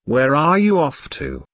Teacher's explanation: notice the falling intonation since this is an information question not yes no question